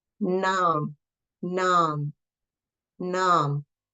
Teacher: the N also is right in back of the two front teeth